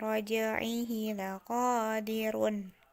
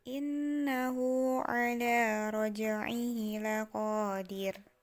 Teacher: Jadi hurufnya tidak lagi berharokat run, tetapi jadi sukun. Laqadir ketika dibacanya menjadi sukun.